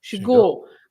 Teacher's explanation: stress the final part of the word in this case